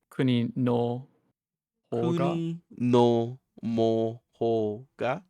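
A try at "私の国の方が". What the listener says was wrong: I don't know where you're getting these M's from.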